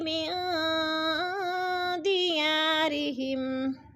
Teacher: نون ساکن کے بعد دال حروف اخفا میں سے ہے تو ادھر اخفا کریں گے، آواز کو ناک میں چھپا کر پڑھیں گے۔